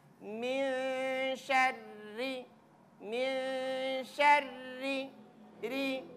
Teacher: Qul a'udzu birabbin nas, malikin nas, Ro-nya perhatikan, ro barisnya I. Jadi kasih tipis.